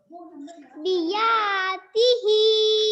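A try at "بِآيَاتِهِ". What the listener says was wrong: बी आ पहले आ है, पहले आ। बी आयाती ही पहले आ है यहाँ पर, पहले बी फिर आ। बी फिर आगे है या। बी आयाती ही।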